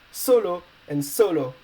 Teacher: accentuated on the last but one syllable both of them